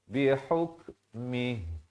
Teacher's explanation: ha pedas bertemu kaf yang bertanda mati asli kena berikan bunyi angin ya, bunyi hamas.